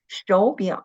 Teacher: when the two third tone were put together, we should turn the first one into the second tone